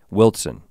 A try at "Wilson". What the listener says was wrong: There's no T in it, but I'm with you.